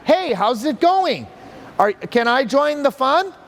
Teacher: there's a tendency to go up in a kind of questioning manner at the end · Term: rapport seeking tonality